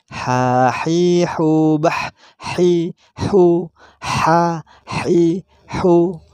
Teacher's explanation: Masih ada hembusan yang keluar karena ha juga memiliki sifat hamz.